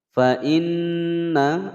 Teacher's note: ada nun bertasydid ditekan dan ditahan selama 2 ketukan.